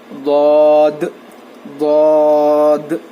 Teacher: ضاد کا مخرج ہے زبان کی کروٹ کو اوپر کے داڑوں کو لگانے سے ضاد ادا ہوتا ہے. آپ جو ہے آپ کے منہ کے حصے کے لیفٹ سائڈ یا رائٹ سائڈ آپ کی مرضی کے حساب سے ضاد جو ہے ادا کر سکتے ہیں.